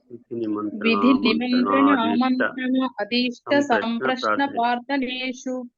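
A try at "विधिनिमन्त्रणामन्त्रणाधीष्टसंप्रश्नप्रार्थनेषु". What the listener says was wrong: ఇక్కడ నా అని చెప్పండి. ఇక్కడ ఆ కాకుండా నా. విధి నిమంత్రణ మంత్రణ.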